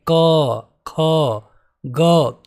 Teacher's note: कंठ वाले जो व्यंजन होते हैं ये गले से इनकी आवाज आती है जैसे कि क ख ग आप खुद उच्चारण करके देख सकते